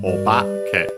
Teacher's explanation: the accent moves with the additional o, so it's accented on the ba